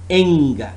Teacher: it's voiced velar nasal sound.